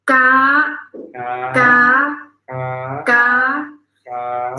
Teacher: High tone is straightforward, but not going down. It's going up.